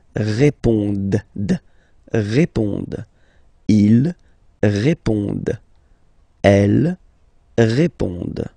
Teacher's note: classic ending, ENT, but then you don't pronounce it